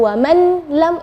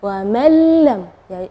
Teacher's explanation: Ya, di situ kita bacanya wa mallam ya, jadi huruf nunnya tidak ada, atau kita dibilang idgham ke huruf berikutnya dan gunnahnya tidak ada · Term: idgham bila gunnah